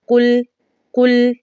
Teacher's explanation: کیونکہ تشدید بھی آ چکی ہے، اس کی وجہ سے کاف کو ڈائریکٹ لام کے ساتھ ملانا ہے اور ساتھ ہی ساتھ ہم نے بغیر گنہ کے اس کی ادائیگی کرنی ہے